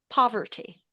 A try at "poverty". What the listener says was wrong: A bit more open instead of an O. Poverty.